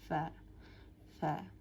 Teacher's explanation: আমাদের উপরে দুই দাত মাঝখানে মানে নিচের ঠোটের মাঝখানে টাচ করবে